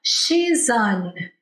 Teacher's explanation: Quando eu vou pronunciar o an, o S ele é uma consoante. Aí o an começa com uma vogal. Então parece que se junta tudo numa palavra só.